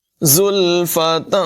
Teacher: زا میں سیٹی کی آواز پیدا کریں گے، تنوین میں اخفا ہوگا، زلفتن نہیں پڑھیں گے بلکہ زلفتن غنہ کریں گے.